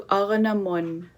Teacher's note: you will drop the final consonant Q in Aranak, and it will change to Aranamun, to the woman